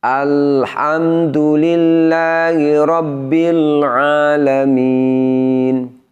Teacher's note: Jadi bunyi lam sukunnya tidak boleh dipantulkan. Caranya adalah dengan suaranya tetap dialirkan, tidak ditahan, juga tidak diputus.